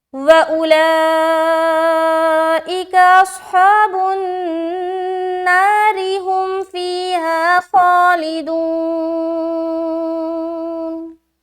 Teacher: یہ وصل کی صورت میں ہم نے را کو باریک رکھا